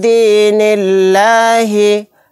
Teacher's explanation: دال ساکن ہے، یہاں پر دال کے اندر قلقلہ ہوگا۔ یہاں پر لفظ اللہ کے لام کو باریک پڑھیں گے کیونکہ لفظ اللہ کے لام سے پہلے زیر آ گیا۔